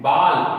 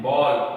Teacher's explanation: तो पहला तो आगत स्वर, इसका उच्चारण कहा जाए तो आ और ओ के मध्य होता है